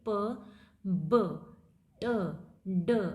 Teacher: ठीक है, जैसे अगर आप बोल के देखेंगे प, तो आप दोनों लिप्स के पीछे हवा को इकट्ठी कर रहे हैं, फिर आप उसको एकदम से रिलीज कर रहे हैं। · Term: प्लोजिव